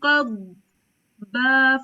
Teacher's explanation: ایپ کے اندر کچھ جگہوں پہ فاسٹ ہوتا ہے مطلب کچھ چیزیں ہیں لیکن جنرلی آپ جہاں پہ ضاد آئے گا نا آپ نے اس کی آواز کو تھوڑی دیر ہولڈ کرنا ہے